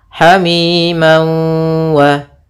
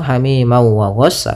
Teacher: Cara membacanya yaitu masukkan tanwinnya ke waw sambil ditahan gunnahnya 2 harakat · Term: idgham bi gunnah